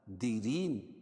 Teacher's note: را باریک ہوگی اور یا ساکن سے پہلے را کے نیچے زیر ہے تو یا مدہ اس کو ایک الف کے برابر کھینچ کے پڑھیں گے.